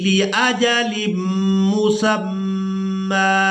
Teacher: یہاں میم مشدد پر غنہ کریں گے